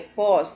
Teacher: Cipós, a sílaba tônica é pós, terminou em os.